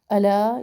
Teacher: الا یہاں پر بھی مد ہے، دو الف برابر